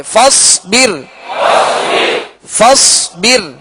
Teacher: را ساکن سے پہلے زیر ہے لہذا را کو باریک پڑھیں گے